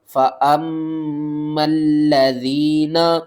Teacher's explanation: میم مشدد ہے، غنہ کریں گے، میم کو لام سے ملائیں گے، تشدید کی وجہ سے لام کو 2 بار پڑھیں گے اور سختی کے ساتھ پڑھیں گے۔